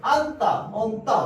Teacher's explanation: 자, 니은 지읒, 안따, 언따 우리는 지읒을 없애버리고 발음해요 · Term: 탈락 현상